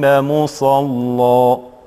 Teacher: أما كلمة مصلى غلب فيها جانب تغليظ اللام، وبالتالي الألف فيها تقرأ بالفتح